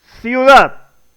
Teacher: Se unen en una sola sílaba y se forma un diptongo.